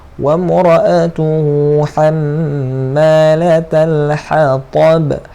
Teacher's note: Ha di belakang, ha di mana kharajna di tengah kerongkong. Ta dia di dalam mulut, menggunakan mulut. Ta ni macam mana nak sebut dia? Tebalkan. Ta. Pangkal lidah naik.